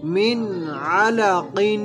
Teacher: یہاں پہ نون ساکن ہے، نون ساکن کے بعد حروف ہلکی میں سے عین آ رہا ہے تو اظہار ہوگا، یعنی غنہ نہیں کریں گے